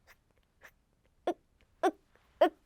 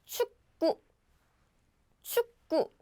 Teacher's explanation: in Korean, we don't have the k sound, but just stop the breath like uk, uk, uk. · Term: glottal stop